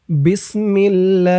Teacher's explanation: তিন আলিফ টান দিয়ে থামবেন। থামার কারণে এই হার নিচে জেরটা সাকিন হয়ে যাবে।